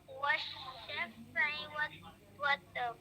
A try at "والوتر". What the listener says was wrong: वतर नहीं है, वत्र.